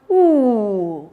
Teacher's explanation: The tongue glides to the back of the mouth and the tongue raises. It rises up. · it's a back high vowel sound.